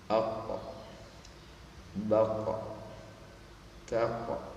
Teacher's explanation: Adapun huruf qaf, perhatikan ko, ko, karena dia lebih mengarah pada daging yang keras, maka terjadi ya pemantulan sifatnya, atau dikenal dengan nama qalqalah pada huruf qaf ketika disukunkan